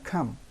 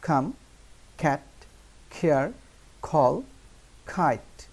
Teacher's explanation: সিতে খ উচ্চারণ হয়। আমরা কিন্তু এটাকে অনেক সময় ক বলি, কিন্তু তা নয়। সিতে যেমন খ, এটাকে আমরা কাম বলি সাধারণত।